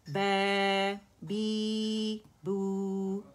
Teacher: با فتح الف صغیرہ با، با کسرہ یا صغیرہ بی، با ضمہ واو صغیرہ بو، با بی بو، دو دو کاؤنٹ اسے ہم پرولونگ کریں گے، با باریک ہوگا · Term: الحرکات الطویلہ